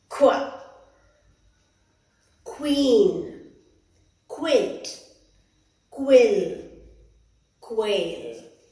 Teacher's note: Q is a combination of two sounds. So it's k and wa, qua. Qua.